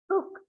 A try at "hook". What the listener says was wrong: Hook, not hooker. Hook. Don't drag. Hook.